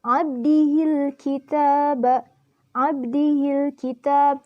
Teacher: Karena huruf alif lam bertemu huruf kaf dan dibacanya secara jelas. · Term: alif lam qamariyah